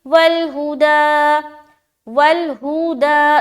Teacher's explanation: वलहुदा दा में खींच रहे अलिफ मद्दा के बराबर